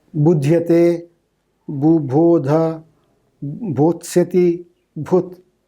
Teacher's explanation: So the examples, Proto-Indo-European, where both the syllables, first two syllables are aspirated. In Sanskrit, the first syllable loses its aspiration. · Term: Grassmann's law